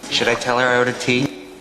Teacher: Tea, and the pitch goes up. It's a yes, no question. Those are our 2 most stressed syllables there.